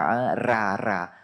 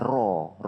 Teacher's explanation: ro berbaris Fathah di atas dia kena tebal tafkhim